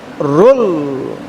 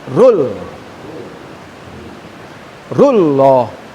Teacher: lam ini memiliki syidah sehingga pengucapan rul itu tafhim